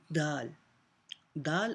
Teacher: ادا کریں دال، زبان کی نوک اور ثنایا علیہ کی جڑ